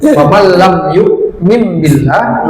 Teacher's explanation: Ada tanda ba kecil ya di ba, di ini mim kecil di ba ini, di atas ba ini tandanya tidak dibaca min tapi mim ya, diganti nun sukunnya menjadi mim sukun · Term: iklab